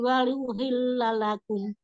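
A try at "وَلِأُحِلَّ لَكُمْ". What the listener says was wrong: Wali uhilla lakum. Wali u diperjelas di situ. Coba wali uhilla lakum sampai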